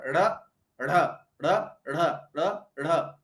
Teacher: देखो, उत्क्षिप्त का मतलब होता है ऊपर की तरफ फेंकना। तो जब हम जिह्वा की नोक को ऊपर की तरफ फेंकते हैं तो उसको कहते हैं उत्क्षिप्त